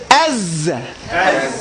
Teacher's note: You have here Safir. Safir is a sound, a whistling sound. It's more of a buzz in the letter Zay